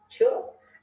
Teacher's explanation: In case of ch, there is no vibration of vocal cords, so ch is voiceless. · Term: voiceless affricate